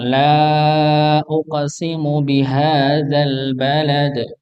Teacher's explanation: lam pada ayat pertama ini dibaca empat empat harakat tidak cukup dibaca Dua dua harakat